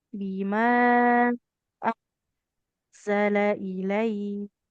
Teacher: Huruf kafnya ada aliran nafasnya